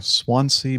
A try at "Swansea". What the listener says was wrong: Swansea, yes. Pretend there's a Z in there.